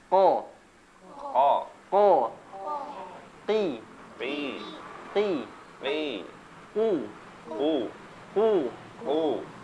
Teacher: Jadi pangkal lidah bertemu dengan langit-langit lunak. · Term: huruf qaf